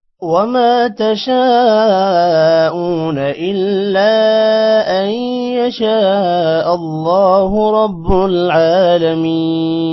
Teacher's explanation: بعد الف ہے الف پر مد ہے لمبا کریں گے اونا حمزہ کے بعد واو ہے تھوڑا سا لمبا کریں گے اور نا کو لمبا نہیں کرنا